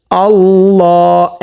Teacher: আল্লাহ এক আলিফ পরিমাণ টান করতে হবে।